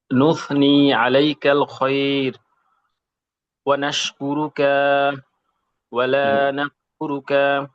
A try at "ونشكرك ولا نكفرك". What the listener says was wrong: হ্যাঁ, কা লম্বা হয়ে যাচ্ছে। ওয়ানাশকুরুকা ওয়ালা নাকফুরুকা, কাকে আরেকটু ছোট।